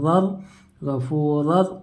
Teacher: दो ज़बर की तनवीन के बाद हुर्फ यरमलून में से अज़ा आकर है, इसलिए बगैर गुन्ना के मिलाकर पढ़ेंगे। इसको ईदगाह में बिला गुन्ना और ईदगाह में ताम भी कहते हैं, जैसे रा दो ज़बर रर, गफूर।